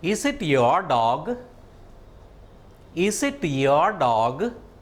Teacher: Did you observe towards the end of the sentence, my speech reached a higher level. I started it at a low level and it reached a higher level. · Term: rising intonation